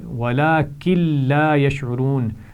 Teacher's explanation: نون ساکن کے بعد لام ہے تو یہاں پر غنہ نہیں ہوگا